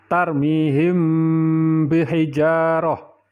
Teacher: Apabila ada huruf mim sukun atau mematikan ketemu dengan huruf ba maka cara membacanya adalah samar-samar dan didengungkan contohnya adalah tarmihim bihijaratim pada ayat di atas terdapat bacaan Ikhfa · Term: Ikhfa Syafawi, ikhfa safawi